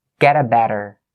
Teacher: So the t in get is between two vowel sounds and it'll change to a d